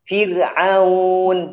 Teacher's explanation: Jadi ro tipis ya karena dia kasroh